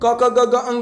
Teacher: क ख ग घ अंग, उसका उच्चारण कंठ से होता है